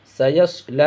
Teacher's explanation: اس سین کو پتلا اور صاد کو موٹا کرنا ہے اور اسلام کو کھینچنا ہے۔